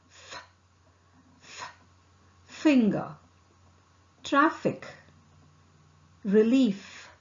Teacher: F is articulated with the upper front teeth making light contact with the lower lips. Here, the vocal cord does not vibrate.